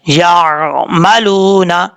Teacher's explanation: یہاں پہ عین پہ جھٹکا نہیں دینا آپ نے نارمل طریقے سے پڑھنا ہے یعملون. وقف کرنا چاہیں تو نون کو وقف جب کریں گے تو نون ساکن ہو جائے گا اور یہاں پہ مد عارض وقفی بھی ہو سکتی ہے اگر کرنا چاہیں تو.